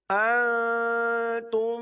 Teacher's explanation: شروع کے نون پر اخفاء کا قاعدہ ہوگا، نون ساکن و تنوین والا اخفاء، اور آگے جو میم ہے اس پر ادغام شفوی ہوگا، دونوں جگہ غنہ کریں گے